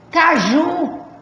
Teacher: A sílaba tônica é o ju. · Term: oxítona